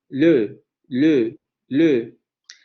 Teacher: pronombre debería pronunciarse con la vocal media central labializada